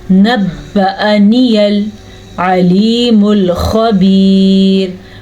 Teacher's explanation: عین کے تلفظ کا خاص خیال رکھنا ہے اور خا کے تلفظ کا بھی خاص خیال رکھنا ہے, کیونکہ خا ایسے ادا کرتے ہیں اور اس کو پر پڑھتے ہیں اور یہ حروف مستعلیہ میں سے ہے. وقف کی وجہ سے را باریک پڑھی جائے گی, کیونکہ جب وقف آیا تو را ساکن ہو گئی, پیچھے ہم نے دیکھا تو یا بھی ساکن تھی, اس سے پیچھے دیکھا تو یا کے نیچے زیر تھی, تو اس وجہ سے اس زیر کی وجہ سے را باریک پڑھی جائے گی.